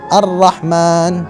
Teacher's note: Jangan sampai ra ini kita getarkan sangat banyak.